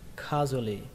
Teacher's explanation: Ở đây trọng âm của nó là âm kha, trọng âm là âm đầu tiên. Còn dù ở khi chúng ta đọc nhanh thì nó giống như là rùa các bạn ạ, như kiểu nó nối lại với nhau đấy.